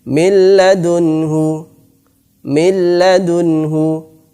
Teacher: idgham bila gunnah, dimasukkan dan tanpa didengungkan. Ini adalah apabila nun sukun, ada nun sukun atau tanwin bertemu dengan salah satu dari 2 huruf ini, lam dan ra.